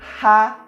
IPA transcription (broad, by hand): ʁ